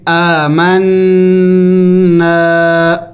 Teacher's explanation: نون مشدد ہے، غنہ کریں گے، یعنی ناک میں آواز پیدا کریں گے